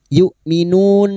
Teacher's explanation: Sekarang di sini kita wasol, kita uraikan pada kalimat yu'minun, hamzah sukun, yu'minun, nun bertemunya mat dengan huruf hidup yang dibaca wakaf mat arid li sukun, 4 harokat kita panjangkan